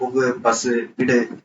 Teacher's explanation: அதை அடுத்து ஒரு வல்லின உகரம் பூ வந்திருக்கு அப்படின்னா இப்ப இந்த பூ வந்து கடைசியில தான் வந்திருக்கு. கடைசியில வந்திருந்தாலும் இதனுடைய மாத்திரை ஒரு மாத்திரை தான், அரை மாத்திரையாக குறையாது.